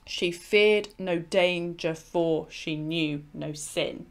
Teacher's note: The important kind of words here are emphasized: feared, the beginning of danger, knew, sin. · each quatrain is finishing on a very strongly iambic rhythm